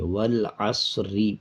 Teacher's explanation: آگے را ہے، را کے نیچے زیر ہے۔ جب ہم اس کو اکٹھا پڑھتے جائیں گے، یعنی آیت کو جب آیت پہ روکیں گے نہیں، وقف نہیں کریں گے، تب را کو باریک پڑھیں گے، والعصری پڑھا جائے گا۔